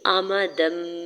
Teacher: امدم بعیدا، حمزہ کے زبر کو میم کے زبر کو بغیر کھینچے ادا کرنا ہے، دال کے اوپر 2 زبر کی تنوین ہے اور چھوٹی سی میم میں اگلا حرف با ہے، تو یہاں پہ اقلاب کا رول اپلائی ہو رہا ہے۔ دال کی 2 زبر کی تنوین کی آواز کو میم میں بدل کے پڑھیں گے